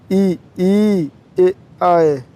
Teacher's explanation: अग्र स्वर, जिन स्वरों का उच्चारण जीभ के आगे के भाग से होता है, ई, ए, आए। ये देखिए, जीभ के सहारा से बोला जाता है।